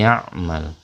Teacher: nun sukun bertemu dengan huruf ya itu dengan suara gunnah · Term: dengung